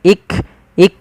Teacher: jangan sampai memantulkan huruf Kaf